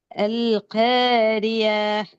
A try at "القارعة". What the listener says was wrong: காரிய இல்ல, ஆட உச்சரிப்பு வரணும். அல் காரிய ஆஹ் ஆஹ் ஆ என்று போயிடலாம்.